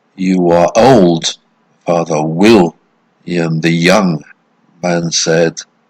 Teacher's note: it's uh two unstressed followed by a stressed syllable